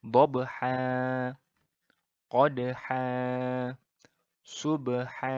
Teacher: Cara membacanya adalah bahwa tanwin yang an ini, yang berbunyi an ini dihilangkan dan dibaca menjadi seperti fathah biasa, yaitu a biasa dengan panjang 2 harokat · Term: mad iwad